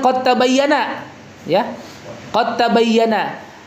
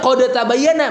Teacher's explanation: huruf dalnya itu melebur sempurna ke huruf ta ya, idgam kamil